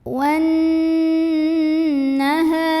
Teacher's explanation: huruf nun ini didengungkan, ditahan kurang lebih 2 harokat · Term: gunnah musyaddadah